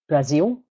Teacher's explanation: this dark l used at the ends of words like Brazil